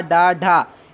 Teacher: मूर्धा मतलब कि दांत के बाद और तालू के बीच में जो इलाका है उसमें जीभ हल्का सा मुड़कर उसको टच करती है, तब वो मूर्धा में आता है।